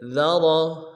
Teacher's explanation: ذا کو باریک کریں گے، را کو موٹا کریں گے